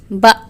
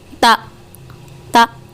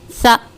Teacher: इन हुरूफ़ को अदा करते वक्त इनके मखरज की आवाज़ क़ुव्वत से ठहरती है और सख्त हो जाती है, यानी कि जब हम इन हुरूफ़ को अदा करेंगे तो इनकी आवाज़ में सख्ती होती है और इनकी जो आवाज़ है वो क़ुव्वत के साथ ठहरती है। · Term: हुरूफ़ शदीदा